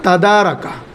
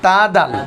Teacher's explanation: ত দাল তা জিব্বার আগা সানায়া উলিয়ার আগার সাথে লাগিয়ে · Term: এক মাখরাজ